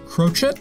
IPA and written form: ˈkroʊtʃɛt (crochet)